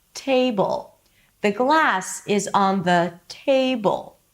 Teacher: we choose to shine on the content words, the words that bring the content, in this case glass and table by going higher in pitch and prolonging them · I'm starting a new word that is stress. So I'm going to go high in pitch. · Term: melody